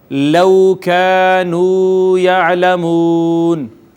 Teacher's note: واو ماقبل مضموم ہے، اس کے بعد سکون عارضی آ گیا، لہٰذا اس کو کہتے ہیں مد عارض